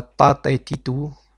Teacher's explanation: C'est exactement la même lettre que la lettre Ta en arabe. Et sa sonorité c'est un T mais appuyé. Ça veut dire qu'on va avec la langue pousser le T jusqu'à en haut du palais.